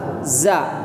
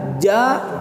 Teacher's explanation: Kalau za ujung lidah, tapi kalau jim tengah lidah, makanya beda.